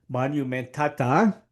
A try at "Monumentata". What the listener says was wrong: you sound Italian when you say it's monumentata. You should sound more camp. More camp.